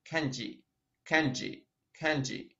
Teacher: Мягкая «ж». В русском языке «ж» всегда твердая. Поэтому очень так непривычно для японцев звучит kanji.